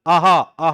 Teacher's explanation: वैसे ही विसर्ग आहा, आहा बोलते हो तो भी जुबान कहीं टच नहीं होता